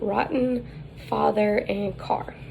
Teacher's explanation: colored vowel listed in our textbook is the script a and the height is low the advancement is back · The height is low, the advancement is back, the lips are unrounded, and it is tense.